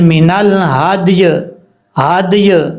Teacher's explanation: من الحدی، ہدی تب پڑھا جاتا جب یا ساکن ہوتی، کیونکہ یا کو ہم عارضی طور پر ساکن کر رہے ہیں، اور دال کے نیچے زیر ہوتی، پھر یہ یا مدہ ہو جانا تھا وقف کرتے ہوئے، پھر ہم اس کو پڑھتے ہدی۔ لیکن دال بھی ساکن ہے اور یا بھی ساکن ہے، دال کے نیچے زیر نہیں ہے، اس لیے یا مدہ نہیں ہوگا، یا کو ہم ساکن کر دیں گے اور پڑھیں گے من الہدی، ہدی اس طریقے سے وقف کرتے ہوئے۔